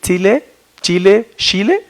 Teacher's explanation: la unidad fonológica predorso-alveolar africada afonaoral, y que tiene variantes en Chile. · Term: alófonos